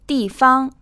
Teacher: This is in the 4th tone and the 1st tone.